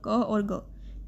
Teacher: अल्प प्राण वर्ण जिसमें थोड़े से प्राण निकलते हैं